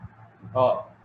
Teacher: জিহ্বা মূল থেকে আসে, এটা জিহ্বামূলীয় ধ্বনি।